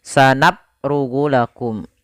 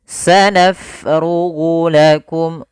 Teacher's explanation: Pada lafal bacaan sanafrughu, fa-nya kita alirkan nafasnya naf. Kesalahan yang terjadi pada lafal huruf fa, dia menjadikan hurufnya menjadi P.